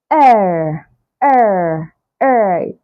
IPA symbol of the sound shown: ɜː